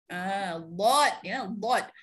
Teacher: mesti di sepanjang tepi lidah menyentuh geraham gigi atas, kiri atau kanan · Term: huruf dad